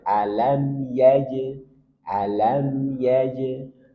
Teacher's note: Dan ingat, lam punya sifat bainiyah. Maka sedikit alirkan.